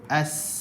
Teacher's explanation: sin ni bila kita sebut, dia kena sebut dengan merendah pangkal lidah, menjadikan huruf tersebut tipis